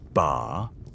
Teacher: If you say it with a high rising tone, ba, it's a question.